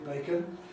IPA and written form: ˡbeɪkən (bacon)